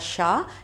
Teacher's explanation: इस शा जो ये आप कहते हैं षटकोण वाला शा, इसका उच्चारण मूर्धा से होता है। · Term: मूर्धन्य शा